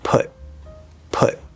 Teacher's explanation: normally we're going to stop that t unless something special happens after it